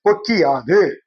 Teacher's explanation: தன்னோட ஒரு மாத்திரை அளவுல குறுகி ஒளிக்கிற இகரம் குற்றியல் இகரம்